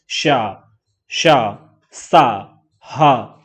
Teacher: ऊष्म व्यंजन हमारे महाप्राण में आएंगे क्यों आएंगे भाई महाप्राण में क्योंकि इनमें ज्यादा हवा निकलती है देखो श श सा ह तो इनमें ज्यादा हवा निकल रही